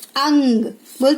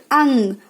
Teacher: अनुस्वार की ध्वनि नाक से निकलती है।